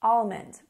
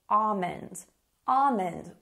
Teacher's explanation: most people would say almond, almond with no L sound